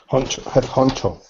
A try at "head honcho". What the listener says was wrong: Head honcho, very good.